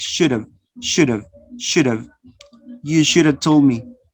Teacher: Notice you're going to omit the consonant is elided, is omitted. And then you use the weak form. Have, a becomes the schwa. You use the schwa.